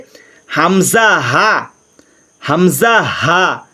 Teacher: 1 নম্বর মাখরাজ হলকের শুরু হইতে হামজা হা